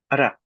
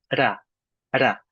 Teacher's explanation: Notice I roll the R just a little bit. It's almost like a dental D.